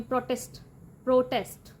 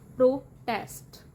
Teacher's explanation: ਨਾਊਨ ਦੇ ਵਿੱਚ stress ਪਹਿਲੇ ਸਿਲੇਬਲ ਤੇ ਹੁੰਦਾ ਹੈ ਤੇ ਵਰਬ ਦੇ ਵਿੱਚ ਦੂਜੇ ਸਿਲੇਬਲ ਤੇ ਹੁੰਦਾ ਹੈ